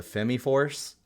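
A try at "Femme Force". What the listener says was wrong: It's probably Fem Force. I don't think you pronounce the E on that. Yeah, that's Fem. Nope. Straight no. You are just full wrong, my dude.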